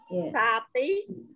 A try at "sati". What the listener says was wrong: tí, xa tí, không đọc là xa tí, tôi có đọc xa là trường âm rồi, Ubadisese Anagamita Ubadisese chấm đọc là xế xế Ubadisese e Ubadisese Anagamita